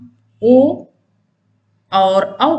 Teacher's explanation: ओ दो तो कंठोष्ठम, ओ और औ का उच्चारण स्थान कंठ और ओष्ठ है।